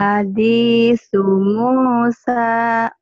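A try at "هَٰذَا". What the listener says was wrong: Hadi bukan hadi ini orang Sundanya, Hadzal.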